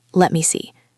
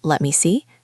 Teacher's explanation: When a native speaker is thinking, their voice usually goes up a little bit at the end of the phrase. It stays open. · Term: rising intonation